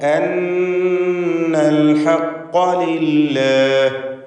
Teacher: ഫഅലിമു അന്നൽ ഹഖ്ഖ ലില്ലാഹ്, അന്ന നൂൻ മുഷദ്ദദയെ മണിക്കുക. ശബ്ദ നൽകപ്പെട്ട നൂൻ 2 ഹറക്കത്തിൻ്റെ അളവിൽ ഉന്നത്ത് നൽകണം. അന്നൽ ഹഖ്ഖ, ഖാഫിന് പൂർണ്ണമായ തഫ്ഖീം കൊടുക്കണം.